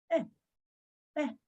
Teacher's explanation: It's a reduced sound. It's a very short sound with a smile. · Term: Ataf sego